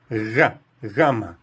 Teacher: aproximadamente um G com o ar raspando no céu da boca